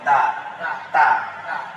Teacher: দালের উচ্চারণ হয় জিহ্বার অগ্রভাগ, সামনের উপরে দাঁতের গোড়া